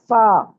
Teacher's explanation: अच्छा, फा जो है, फा को अदा करते हुए ऊपर वाले दांत जो हैं वो आपके नीचे वाले होंठ को टच करते हैं, गीले हिस्से को टच करेंगे तो फा अदा होगा, फा, ये आमतौर पर हम ठीक पढ़ते हैं।